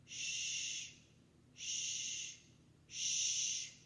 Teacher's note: the back of the tongue stays down the tip goes up